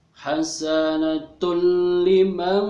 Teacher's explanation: Jadi cukup dimasukkan saja atau ditekan langsung ke huruf yang ada di depan tanwin itu, namun tanpa guna artinya tanpa ditahan atau tanpa dengan dengung begitu ya. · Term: idgham bila gunah